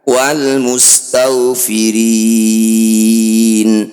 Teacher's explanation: Ri panjangkan 6 harokat, huruf terakhir sukunkan. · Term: mad arid disukun